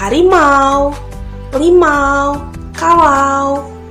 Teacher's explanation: gabungan vokal AU menimbulkan bunyi konsonan luncuran AU pada kata harimau, limau, kalau. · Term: diftong